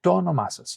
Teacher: observe here with to onomasas how the word has two tones